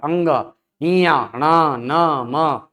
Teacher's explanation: ये ऐसे वर्ण है जिनका उच्चारण करते समय वायु नासिका की तरफ जाती है।